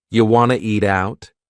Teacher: we have reduced want to to become Wana this is a common reduction in English